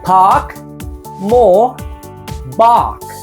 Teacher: Here, as you can see, the R is relaxed in the middle of the mouth, not touching any gum ridge nor any palate, and therefore, the R is not pronounced. The British R is silent when the R is in the middle of the word, but the vowel is quite long